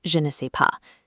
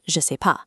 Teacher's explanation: In the wild, that ne is completely abandoned. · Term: dropped negation